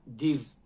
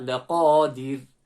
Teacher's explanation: Because this dal has a kasra, it renders the ra empty mouth. Dir. So try to smile when you're coming to the end of that.